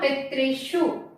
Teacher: पितृषु जो है ये मूर्धन्य सा है